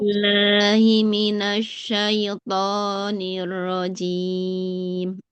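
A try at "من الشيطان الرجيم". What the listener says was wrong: Jangan cim. Jimnya jangan mengalir nafas. Tidak cim. Jajiju. Oh, sama huruf jim dulu Ibu ya.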